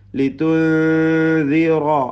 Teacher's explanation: സുക്കൂൻ നൽകപ്പെട്ട നൂനിനെ മണിക്കണം. ഇഖ്ഫാ അവ്യക്തമാക്കി മണിച്ചോതുക. ലിതുൻദിറ റായിന് പൂർണ്ണമായ തഫ്ഹീം കൊടുത്ത് തടിപ്പിക്കണം.